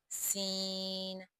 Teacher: سین، سین بھی حروف صفیریہ میں شامل ہے، یعنی اس کو ادائیگی کرتے وقت سیٹی کی سی آواز پیدا ہوگی، سین۔ اور یہ حروف اصلیہ میں شامل ہے، اس کا مخرج زبان کی نوک سے ادا ہونا، سین۔